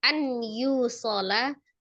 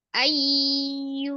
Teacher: Ayyu ditahan ya. Ditahan kemudian didengungkan. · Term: idgham bi gunnah